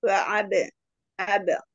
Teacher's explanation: ba dengan sukun asli bacaan qalqala sughra dipantulkan kecil